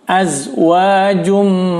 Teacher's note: Fiha azwajum, az jangan sampai dipantul di huruf zai ya, jangan sampai dipantul di huruf zai. Di sini jangan sampai dipantul karena bukan huruf qalqalah.